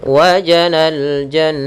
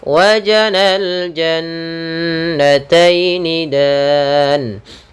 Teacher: Cara membacanya ditahan suaranya, maka dan dimasukkan ke rongga hidung. Wajanal jan, masuk rongga hidung, karena gunnah itu memasukkan ke rongga hidung kita.